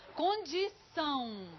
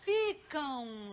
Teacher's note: Se chama de ditongo nasal, porque é como se tivesse o A e o U.